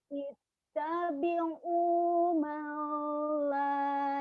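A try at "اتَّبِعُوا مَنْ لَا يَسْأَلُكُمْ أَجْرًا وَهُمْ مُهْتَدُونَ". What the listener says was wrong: Alnya jangan ditahan. Malla idgham bila guna. Malla, lanya matobi'i. Ittabi'u malla.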